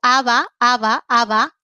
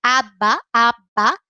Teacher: Cuando yo digo aba, aba, aba, los labios solo se tocan un poquito